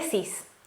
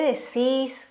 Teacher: una persona de buenos aires como que estira un poco más las palabras